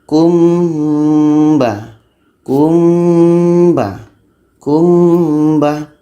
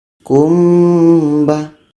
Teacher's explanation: Mim mati ba dengung 2 harakat